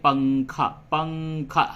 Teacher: اخفا کی مثال اردو میں یوں دی جاتی ہے جیسے ہم لوگ بولتے ہیں پنکھا، پنکھا، ہلکی سی ناک میں آواز جاتی ہے، غنہ سے کم ہوتا ہے